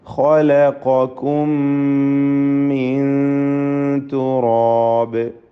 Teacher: സക്കിന നൂൻ ഇഖ്ഫാ ഹഖീഖി നൽകി അവ്യക്തമാക്കി മണിച്ചുകൊണ്ട് ഉച്ചരിക്കണം